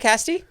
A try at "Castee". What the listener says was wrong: You said Castay. You added like a little accent mark above it.